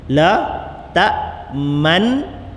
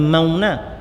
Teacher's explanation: Man tu sebut bagi letak ujung lidah tu, letak dekat gusi tempat nun mati tu. Man, dengungkan dia, masa dengung tu muncung. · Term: ismam